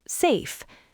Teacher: Let's look at the words safe and save. Safe ends in an unvoiced F. The vowel is short.